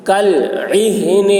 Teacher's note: عین کو حلق سے اور ہا کی آواز بھاری ہوگی